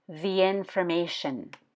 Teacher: has a long e sound before a vowel sound information begins with a vowel so it sounds like the information